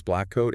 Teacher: and then you release. That tiny almost imperceptible pause where the first sound isn't released.